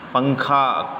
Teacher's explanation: نون کی آواز کو ناک میں چھپا کر پڑھنا چاہیے۔ نوک زبان تالو سے ہٹا کر، جیسے اردو میں پنکھا کے نون کو پڑھتے ہیں۔ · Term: اخفاء